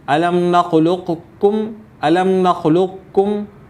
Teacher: اور ادغام ناقص کا طریقہ یہ ہوگا الم نخلقکم الم نخلقکم، کہ قاف جو ہے لام اور قاف آپ نے بالکل لقکم الم نخلقکم، کہ پہلے قاف کو آپ نے موٹا پڑھنا ہے اور یہاں پر قلقلہ نہیں ہوگا · پہلے قاف کو موٹا، پھر کاف جو قاف کے بعد ہے اس کو باریک پڑھیں اور ادغام ناقص کریں